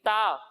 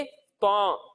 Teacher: एक हर्फ है ता और दूसरा हर्फ है त्वा। जब हम ता की अदायगी करेंगे तो इसे हम बारीक पढ़ेंगे। किस तरह पढ़ेंगे? बारीक। बारीक यानी पतला कर कर पढ़ेंगे। और जब हम त्वा की अदायगी करेंगे तो इसे हम मोटा कर कर पढ़ेंगे। ठीक है जी। यानी इसे हम पढ़ेंगे ता और इसे पढ़ेंगे त्वा।